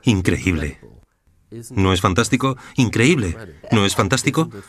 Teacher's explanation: Tienes una voz muy melódica tu voz sube y baja